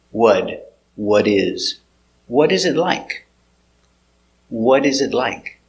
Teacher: the T changes to a D